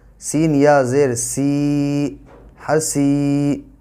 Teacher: اب ہا زبر ہا، اس کے بعد یا ساکن سے پہلے زیر ہے اس لیے یا مدہ ہوگا، اور یا مدہ کو ایک الف کے برابر کھینچ کر پڑھیں گے